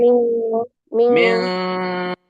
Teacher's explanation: directly मी बोल के नाक में जाने का आवाज ले जानी है